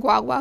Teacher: the hard g is pronounced less percussively and with more breath like a w